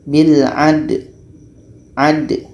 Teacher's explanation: Da ini sifatnya adalah qalqalah. Ada pantulan. Jadi kita baca qalqalahnya atau pantulannya.